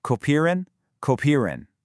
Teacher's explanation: I want you to really focus on that e in the middle. In German, whenever you see ie together, it makes a long e sound like in the English word be.